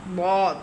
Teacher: দটা হল জিহ্বার ডান অথবা বাম কিনারা এবং আদ্রাসে উলিয়ার গোড়া